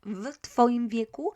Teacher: as t is unvoiced, v is voiced, the v will become f